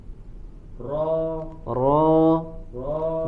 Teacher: ro ro ro getarannya tidak terlalu banyak